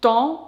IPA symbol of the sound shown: ɑ̃